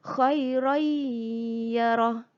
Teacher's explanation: tanwin bertemu ya hukumnya ialah idgham maal ghunnah masukkan dan dengungkan